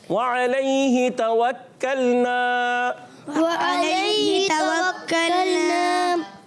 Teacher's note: वाव की अदायगी होठों की गोलाई से होगी और वाव हमेशा होठों की गोलाई से ही अदा होता है। · हा के नीचे खड़ी ज़ेर है, इसलिए इसको एक अलिफ खींच कर अदा करेंगे।